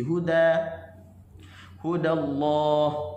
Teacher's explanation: kalimah al huda, huruf dal hujung lidah di gusi